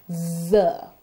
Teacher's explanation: These sounds are the Z, Z, and J sounds. The Z sound is a voiced alveolar fricative. You'll notice that it's a continuous sound and it's made when the tip of the tongue comes to the teeth ridge.